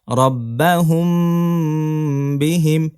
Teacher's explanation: মিম সাকিনের পরে বা হরফ আসলে নাকের ভিতরে নিয়ে পড়তে হয় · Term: মিম সাকিনের ইকফা